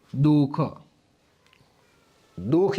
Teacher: તો આ છે ને મિત્રો આમાં વિસર્ગ બોલાતો નથી · આમાં વિસર્ગ બોલાતો નથી એટલે ઉચ્ચાર એનો થતો નથી